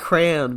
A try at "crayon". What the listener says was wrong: It's Cray-On. You don't say it like that every time. You say Crayon. You pronounce the Y. You pronounce the Y. There's a Y in it. You have to. You're dropping like three letters. No, because you're saying cran. You're saying cran.